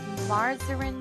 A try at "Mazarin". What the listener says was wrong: I love your creation of an L there. Marzarin? Mazarin? You said Marzarin.